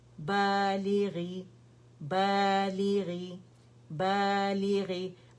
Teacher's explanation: کیونکہ الف جو ہے وہ فتح کی آواز کو اسٹریچ کر رہا ہے، اور با کے اوپر ہے فتح، ٹھیک ہے۔ اچھا، فتح کی آواز کیونکہ الف سکون سے پہلے جب فتح آتی ہے کسی بھی لیٹر پہ آتی ہے تو الف مدہ بن رہا ہے، ٹھیک ہے۔